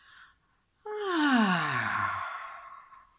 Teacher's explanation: Et laissons-nous inspirer et expirer avec le son A que nous pouvons vocaliser, c'est-à-dire on ne va pas chanter exprès, mais ce qu'on va faire, c'est on va partir d'un son un peu plus aigu et on descend jusqu'à le plus bas possible, en même temps que notre poitrine s'abaisse et que notre sternum va en direction du sol et des vertèbres.